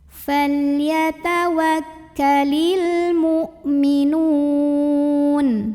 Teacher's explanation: ada alif lam yang bertemu huruf qamariyah yaitu mim, maka dibaca lam sukunnya jelas. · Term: alif lam qamariyah